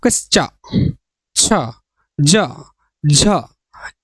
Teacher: हैं दिया गया है जब मुख द्वारा बहुत को बंद करके इस प्रकार बोलते हैं कि हवा स्थानों को कुछ रगड़ हुई चली जाती हो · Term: स्पर्शी व संघर्षी व्यंजन